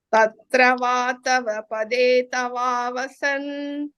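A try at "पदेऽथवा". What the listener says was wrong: Pade thava. Ta is Mahapranam. Pade thava vasan. Tha. Pade. Tha, Pade thava vasan.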